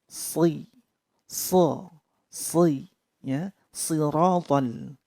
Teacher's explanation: Untuk shad itu pangkal lidah naik.